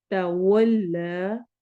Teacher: वाव में होंठ गोल होंगे।